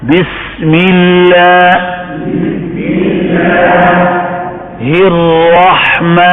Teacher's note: اب را کو پر پڑھنا ہے اور ہا کو درمیان حلق میں